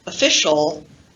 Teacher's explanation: when the stress changes and we have the word official that o now becomes the unstressed vowel schwa